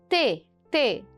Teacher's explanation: também é oclusiva ou seja também tem um fechamento mas ele é alveolar então vamos entender essa expressão alveolar t t falei a consoante